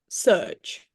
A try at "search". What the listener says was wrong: And you're saying it with an S.